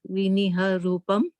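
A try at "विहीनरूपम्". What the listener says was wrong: Vihina Rupam. The H comes first.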